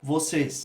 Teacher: é timbre fechado, embora seja tônico, só que é um timbre fechado, a gente vai usar o acento circunflexo.